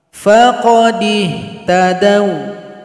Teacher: ada huruf waw sukun, didahului dal yang fathah, maka nggak usah dipanjangkan, dibaca pendek saja